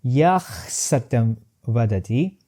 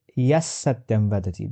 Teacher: rather than forcing myself to maintain that initial voiceless glottal fricative, I just will go for replacing it with half sa. So rather than saying it Yah Satyam Vadati, I will say Yas Satyam Vadati, because it just takes too much time while we are making it.